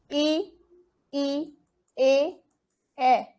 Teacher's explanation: जीभ का अग्र भाग काम करता है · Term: अग्रस्वर